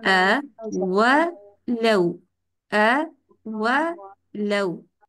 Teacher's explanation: हमजा के ऊपर फतहा है, होंठ सीधे रहेंगे, वाओ में होंठ गोल करने। हमने इसको आवा लव नहीं पढ़ना, यानी होंठ सीधे करके वावा नहीं पढ़ना।